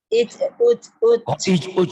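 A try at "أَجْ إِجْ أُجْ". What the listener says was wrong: Ini A-nya nggak dibaca. A-nya nggak dibaca Bu? Ini alifnya dibaca semua Bu. Alif wa fathah A, jimnya mati jadi aj. Aj, ij, uj atuh Bu. Aj.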